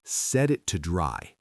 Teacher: In fast English, we almost never say to. We reduce it. It becomes to. · The T at the end of it is what we call a stop T. You get your tongue ready to make the T sound at the top of your mouth, but you stop the air. You don't let the air explode out.